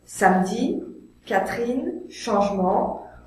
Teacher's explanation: Lorsque ce E muet est placé entre deux consonnes, il est rarement prononcé.